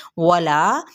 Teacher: वला, वाव हुंटों की ना तमाम गुलाई के साथ, और ला क्या है मद्दे सलीबी अलिफ का कायदा, इसको एक अलिफ या दो हरकत के बराबर खींचेंगे।